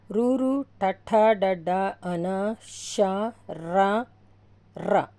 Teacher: మూర్ధన్యములు అంటే అంగిలి పై భాగం నుండి పుట్టినవి